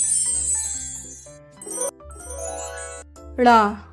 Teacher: ळ एक उत्क्षिप्त व्यंजन है जो कि मूर्धन्य द्वारा शीघ्रता से बोला जाता है। जीभ को मूर्धा से छूते हुए बाहर की ओर शीघ्रता से फेंक कर बोलते हैं